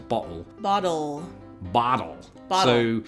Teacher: if I'm speaking quickly, I might put a glottal stop in there. In other words, bottle.